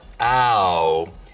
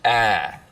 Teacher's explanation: smoothing is when you take a diphthong, like ow, and smooth it out so it's just one sound, ah